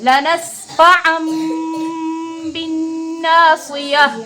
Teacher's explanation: نون کو میم سے بدل کر غنہ اور اخفا کے ساتھ پڑھیں گے